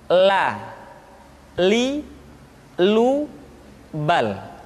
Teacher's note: huruf la diucapkan dengan mengangkat ujung lidah kita, dengan disentuhkan dengan langit-langit.